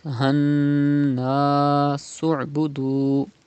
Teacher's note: You have to do Gunna. Means you have to keep the sound in your nose up to 2 harkat